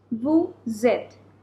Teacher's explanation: Now the sound is of Z. So this is called liaison because we have a vowel after the consonant S.